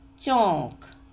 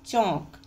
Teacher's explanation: आंधी, उच्चारण देखिए, घंटा, सांस, यानी जो अनुनासिक लगे हैं उनमें नाक और मुंह दोनों से हवा निकल रही है, और जिसमें आपका बांधा गोंद, ये देखो मैंने कहा था शिरोरेखा के ऊपर मात्र है, इसका मतलब ये अनुनासिक है और इसका उच्चारण नाक और मुंह दोनों से निकल रहा है